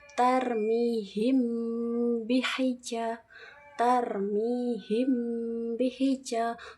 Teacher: Nah, ikhfa syafawi itu mim sukun bertemu dengan huruf ba. Cara bacanya samar-samar di bibir disertai dengung yang agak lama.